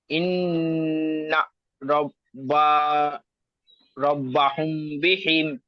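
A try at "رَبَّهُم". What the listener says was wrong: হুম টান দিতে হবে, গুণনা করতে হবে।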